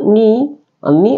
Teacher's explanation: ni adalah tarful lisan, keluar dari ujung lidah kita